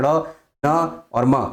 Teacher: जब हवा नाक से भी निकले, उनका उच्चारण करते समय मुंह का कुछ भाग बंद रहता है और ध्वनि नासिका से निकलती है। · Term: नासिक व्यंजन